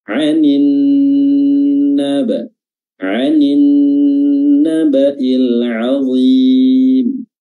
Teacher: Jadi tasydidnya nun ini sama durasinya dengan mim ketika bertasydid, harus ditahan lebih lama daripada huruf-huruf yang lain